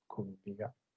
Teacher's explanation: The epenthetic vowel gets the high from the verb stem itself, and then the mid, the second one, goes on the first syllable